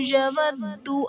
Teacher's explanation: یود میں دال حرف قلقلہ مشدد ہے تو یہاں پر قلقلہ خوب جماؤں کے ساتھ ادا کریں گے